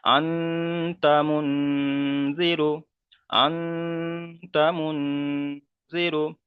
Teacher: নুন সাকিনের আওয়াজকে নাকে তুলে একালিপ পরিমাণ গুণনা করে পড়তে হবে